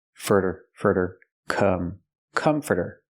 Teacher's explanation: we hear the T pronounced like a fast D